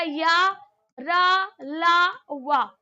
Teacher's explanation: ये जो वा होता है इसका दंत और ओष्ठ दोनों हो जाते हैं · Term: दंतोष्ठम